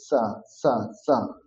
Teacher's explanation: দন্ত স হবে দাঁতে থেকে সা সা সা, জিহ্বা দাঁতকে স্পর্শ করবে